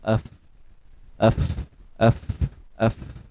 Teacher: fa berada di gigi kacip atas bertemu dengan perut bibir bawah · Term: makhraj fa